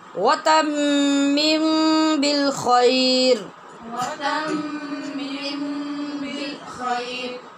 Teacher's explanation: اخفاء شفوی ہوگا نا غنّے کے ساتھ